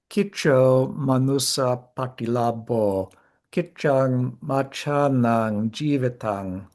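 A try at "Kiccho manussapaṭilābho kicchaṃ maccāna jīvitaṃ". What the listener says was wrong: But I noticed there you were pronouncing all of the anuswaras as a ng. without more, in Pali, you see the anus of the word ending in a subdotted M will be on its own. Machanam would be pronounced with an ang typically.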